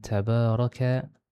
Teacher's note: itu maksud mad asli memelihara baris dan juga panjangnya dua harakat